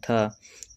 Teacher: थ किस में टकरा रहा है? जीभ तो दंत में टकरा रहा है।